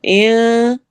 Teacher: ان پہ ہم نے نون کی آواز کو چھپانا ہے